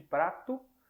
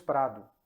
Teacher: o T, que é um som surdo, se torna um D. É por isso que de prato nós temos prado.